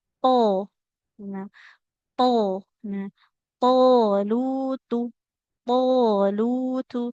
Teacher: ujung lidah ditempelkan ke pangkal gigi seri yang atas dekat dengan gusi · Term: Huruf th